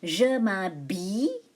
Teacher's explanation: Now, I say Y, not L. The L is silent.